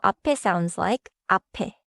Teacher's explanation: Because 에 starts with a vowel, the 피읖 links forward